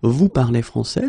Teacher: we can keep the same order, we just need to raise the voice at the end